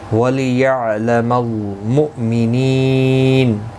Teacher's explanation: وَلِيَعْلَمَ الْمُؤْمِنِينَ، کسی بھی حرکت والے حرف کو کھینچنا نہیں، حمزہ ساکن کو جھٹکے کے ساتھ ادا کریں گے